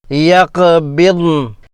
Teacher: ضاد پر سکون ہے، واضح ادا کیا جائے۔ زبان کے کناروں کو اوپر کے داڑوں کی جڑوں سے دونوں طرف سے لگانا چاہیے، اگر نہ ہو تو ایک طرف سے ہی کافی ہے۔